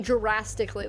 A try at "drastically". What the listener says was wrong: You said Jurassically. The D kind of sounded like a J.